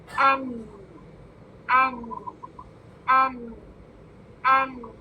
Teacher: زبان جب آگے چپک جاتی ہے نا تو آواز کو باہر نکلنے کا راستہ نہیں ملتا اور اس لیے آواز ناک سے نکلتی ہے. ٹھیک ہے, تو جب ناک سے آواز نکلتی ہے تو یہ غنہ ہو گیا. · एन बारीक लेटर है, बारीक साउंड है और गुन्ना के साथ अदा होता है। जब भी अदा होगा इसमें गुन्ना हो, ठीक है।